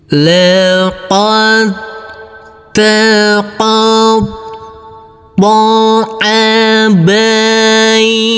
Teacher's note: Jadi huruf dal tidak kita pantulkan. Huruf ta kita tekan, kita tahan saja dengan 2 harokat.